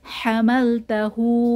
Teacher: হু হাতে উল্টা পেশ এক আলিফ টান হবে